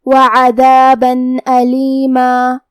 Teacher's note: ہم تنوین کو ظاہر کریں گے اور اسے نون ساکن پڑھیں گے اور بغیر غنہ سے یہ حکم کو ادا کریں گے